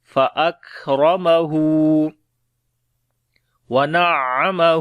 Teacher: عین کے اوپر شد ہے، تھوڑا سا سٹرونگ پڑھیں گے اور عین کی آواز گلے کے درمیان والے حصے سے بھی پڑھیں گے